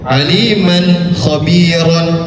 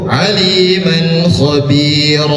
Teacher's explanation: Karena dia masuk pada hukum mad iwad yang dibacanya tidak dengan harakat aslinya yaitu aliman khobir. Panjang bacaannya dua harakat. Jadi enggak usah terlalu panjang, cukup aliman khir.